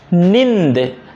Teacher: अनुस्वार की तरफ प्रयोग होता रहता है जैसे देखेंगे यह नींद जब आप नींद कहते हैं तो नाक और मुंह दोनों लगता है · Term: अनुनासिक